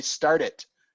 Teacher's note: you can hear the T when I say start it. Start the car, start it. You cannot hear the T if I say he started tying flies. Then it's a D, started.